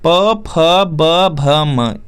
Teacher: प वर्ग का यहाँ पे उच्चारण स्थान ओष्ठ होता है